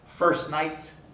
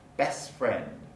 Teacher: you want to say the t but we don't there basically there's too many consonants together so the weak alveolar stop undergoes deletion